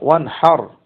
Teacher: এখানে নুন সাকিনটা গুন্না ছাড়াই তার মাখরাজ থেকে স্পষ্টভাবে উচ্চারিত হচ্ছে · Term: নুন সাকিনাহ